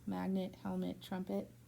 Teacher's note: So in these words, the second syllable doesn't get stressed and it has that reduced vowel sound, so you don't fully hear it.